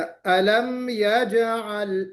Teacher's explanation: जीम पर कलकला होना चाहिए